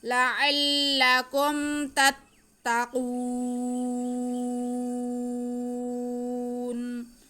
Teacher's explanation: ہم نے نون کو ساکن کر کے وقف کر لینا ہے. حرف مدہ کے بعد جب عارضی سکون آئے گا تو یہاں پہ مد عارض ہوگی. ہم وقف کھینچ کے کریں گے.